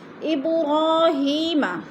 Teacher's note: با ساکن ہے، حروف قلقلہ میں سے ہے تو ادھر قلقلہ کریں گے